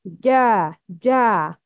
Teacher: Shape of the tongue, raising the middle of the tongue against the upper palate. Ja, ja, raised, not low. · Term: letter jim